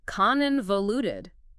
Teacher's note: Four syllables. Stress on the first one. This time you got it.